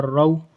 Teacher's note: ذال، واؤ، زبر، ذو، را، واؤ، زبر، رو، یہ را ہے، را کے اوپر زبر ہے تو اس لیے را کو پر پڑھیں گے، موٹا پڑھیں گے را کو